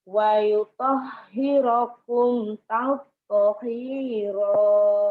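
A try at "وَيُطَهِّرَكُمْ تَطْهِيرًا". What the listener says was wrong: Itu bisa ya. Cuman masih agak lebay, kurang cepat. Wa yutahhirukum tapo tapo tapo hiro gitu. Lo bisa ya, tapo hiro gitu.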